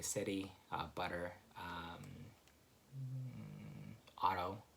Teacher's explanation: just a phonological change that happens, which is what we call flapping